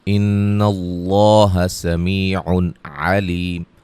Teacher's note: نون مشدد پہ غنہ ہے، لفظ اللہ کے لام کو موٹا ادا کریں گے